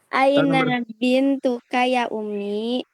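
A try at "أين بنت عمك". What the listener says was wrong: Di sana Umi atau Ami? Pakai ain. Ain bakal pakai ain berarti Ami.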